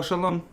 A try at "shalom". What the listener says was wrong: Yeah, there's no G. Why are you saying it like shalong? It very much sounds like I thought he was saying schlong too.